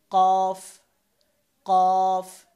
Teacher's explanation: তারপর হচ্ছে কফ, কফ, এই জিব্বার গোড়া, জিব্বার গোড়া উপরের তালুর সাথে লাগাতে হবে